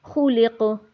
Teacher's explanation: اب خولق قاف کے اندر ہم نے قلقلہ کیا ہے، کیونکہ یہ قاف کتب جدن قلقلہ والے حروف میں سے ہے اور یہ وقف کی صورت میں اس پر قلقلہ کریں گے۔